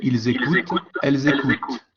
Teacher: la única diferencia es que el fonema dental final se pronuncia un poco más